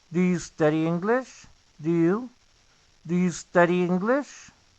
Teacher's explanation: No pronuncies la E antes de la S. Únicamente la S.